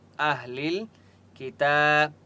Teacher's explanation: تا کے اوپر کھڑا زبر ہے، تا کو 1 الف کی مقدار کھینچ کر پڑھیں گے۔